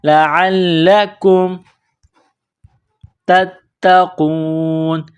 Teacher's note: تتقون، تا کو تا کے ساتھ ملانا ہے، پلس کرنا ہے، تا کے اوپر تشدید ہے تو تا میں سختی کرنی ہے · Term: لام میں سختی